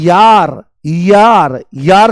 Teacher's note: य बोलते ही ई की ध्वनि आती है। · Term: अर्धस्वर